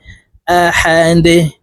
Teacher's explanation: ডাল যেহেতু কলকলার হরফ নিচের দিকে ধাবিত করে ধাক্কা দিয়ে উচ্চারণ করব